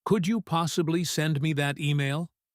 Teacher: Rising intonation, very polite.